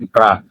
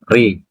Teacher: When you pronounce Ra, the tip of the tongue lightly taps the gum ridge just behind the upper front teeth. For a rolled or trailed Ra, the tongue rapidly vibrates against the ridge.